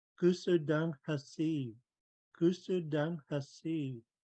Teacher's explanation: The underlined G is from back in the throat.